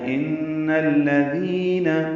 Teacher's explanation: ان میں نون مشدد پہ غنہ ہے اور الذین کے لام سے ملا دینا ہے